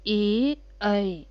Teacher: हमारे गले से भी आवाज़ निकल रही है, लेकिन तालु में भी वाइब्रेशन होती है हल्की सी। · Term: कंठ तालु